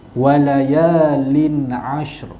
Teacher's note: huruf ra dibaca dengan tebal kerana huruf ain sebelumnya tu berbaris di atas